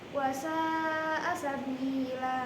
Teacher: Karena ada fathah tain pada akhir kata karena waqaf maka dibaca panjang. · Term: mad iwad